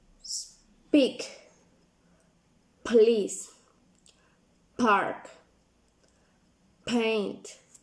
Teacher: p is done by blocking the air with with your lips